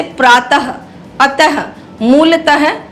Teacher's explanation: इसका उच्चारण ह की तरह होता है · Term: विसर्ग